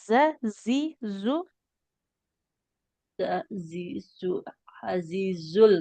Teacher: Huruf za itu dia punya sifat sofir namanya bunyi desis ya.